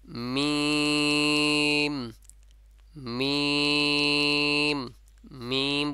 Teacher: ভিতরে রেখে এ উচ্চারণটা হবে যেমন মিম মিম মিম বলবো যখন নাকের ভিতর থেকে একটু চাপ লেগে ভিতর থেকে বাঁশি মানে ভিতর থেকে আওয়াজটা বের হবে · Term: গুণাহ